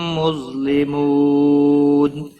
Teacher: مد العارض وقف بھی ہوگا, 3 سے 5 الف کے برابر کھینچ کر وقف کریں گے.